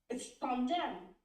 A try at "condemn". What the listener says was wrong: Yeah, but you just sound so much O, but it's you remember it's not O. It's not it's more condemn. Condemn. So it's like you saw it, yes, it's like A on the other side.